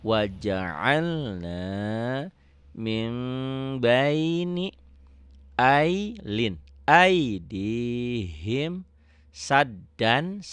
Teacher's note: Jadi n-nya berubah jadi m.